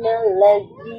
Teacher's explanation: নুনের মধ্যে আমরা গুন্না করছি কারণ নুন শাদ্দা